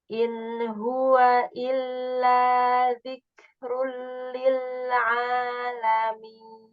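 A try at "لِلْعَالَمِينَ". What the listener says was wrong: Bagus, tapi A-nya ada suara hidungnya di mat. A. Enggak, bukan A. Ala.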